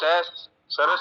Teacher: और जो सह सरस वाला है वो दंतव्य है, वो दांतों के पास से बोला जाता है।